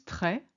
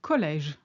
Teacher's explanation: It's often applied to the E in the middle of a word to signal it should be pronounced as an open E sound, rather than being silent or forming a diphthong